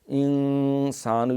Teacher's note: یہاں نون پہ اخفا ہے، نون ساکن کے بعد سین ہے